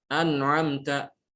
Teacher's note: Nun di ujung lidah sementara ain di pangkal tenggorokan.